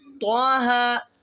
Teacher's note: دونوں کے اوپر کھڑا زبر ہے تو ان کو 1 الف کی مقدار میں کھینچ کے پڑھیں گے اور ہا کو سینے سے ادا کریں گے